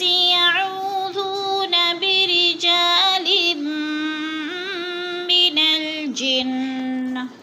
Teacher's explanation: یعو کو تھوڑا سا کھینچنا ہے، وہ مد ہے، ذو کو بھی کھینچنا ہے، وہ مد ہے